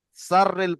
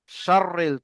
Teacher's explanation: এই সিনটাকে আপনারা সিন পড়ে ফেলছেন, সাররিল পড়ছেন, সাররিল হবে না, শাররিল, তালবেশ এর মতো উচ্চারণ করতে হবে।